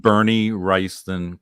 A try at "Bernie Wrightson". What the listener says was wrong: Bernie Wrightson. You're adding an extra syllable in there.